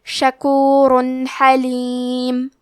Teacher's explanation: واللہ، کلمت شکورن کے آخری میں را پہ تنوین پیش ہے، پھر حرف الحاء ہے، کلمت حلیم، یہاں بھی حکم ہے اظہار تو ہم تنوین کو ظاہر کریں گے اور بغیر غنہ سے یہ حکم کو ادا کریں گے